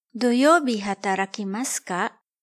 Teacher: To convert a sentence into a question, just add the particle ka at the end of the sentence and pronounce it with a rising intonation. 土 曜 日 働 き ま す か?